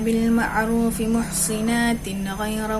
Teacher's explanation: Imam Kisai dengan 2 harakat mad badal dan kasrah sad pada muhsanatin